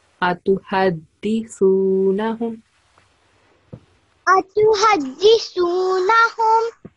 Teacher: So dal sound is da, not za.